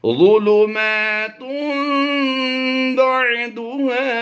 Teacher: تا دو پیش تن کی تنوین کے بعد حرف با آ گیا تو یہاں پر تنوین کی نون کو میم سے بدل کر اقلاب کرتے ہوئے ہم نے پڑھنا ہے